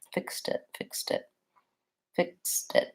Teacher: I tend to use a stop T there when I'm linking, but it may sound a little bit like a flap T.